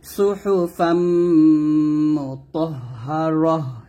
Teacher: যদি ওয়াকফ দেন তাহলে তাটা হা সেকেন্ড পড়বেন